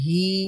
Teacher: আর হি এর সাথে একটা ই সাউন্ড যোগ হবে, তখন হি আর ই দুইটা মিলে একটু সাউন্ডটা লম্বা হবে। দীর্ঘ হবে, হি হবে।